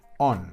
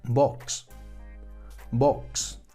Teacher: la pronunciación corta de la vocal O, que sí es como una O en español